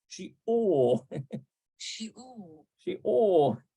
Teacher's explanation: You don't hardly ever hear the R sound, do you? It's like Shiur.